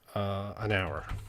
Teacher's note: in english in this word the h is silent we don't say the h